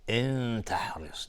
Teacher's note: نون ساکن باش تای دو نقطه اخفای حقیقی